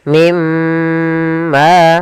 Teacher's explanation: Cara membacanya masukkan nunnya ke huruf mim dan kemudian ditahan dengan gunah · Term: idgham bighunah, idgham bi gunnah